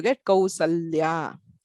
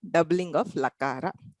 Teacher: In Sakara, you have the a, l, and y. So there is a swara and there is a lakara followed by y, which is not a vowel. So therefore, this l is doubled and you get Kausalya.